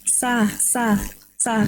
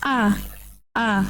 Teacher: dia jelas dia tidak menghembuskan nafas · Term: jahar